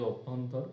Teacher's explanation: অভ্যন্তর, এটাই উচ্চারণ হয় বয়ে ভ, জফলার উচ্চারণ হয় না